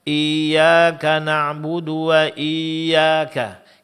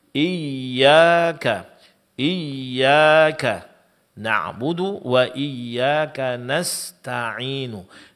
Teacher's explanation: memberikan sedikit tekanan pada makhraj huruf ya, yaitu di tengah-tengah lidah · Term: huruf ya yang bertasydid